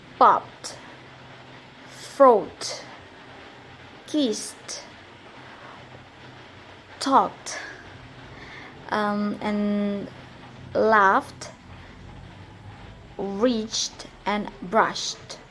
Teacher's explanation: in three different ways the first way is the T sound final Ed pronounced T after all voiceless sounds are p f k s and the for example the verbs